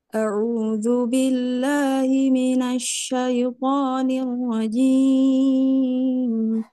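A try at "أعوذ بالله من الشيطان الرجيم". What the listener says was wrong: Nirojim. Ujungnya masih terlalu naik. A'udzu billahi minasyaitonir rajim. Datar.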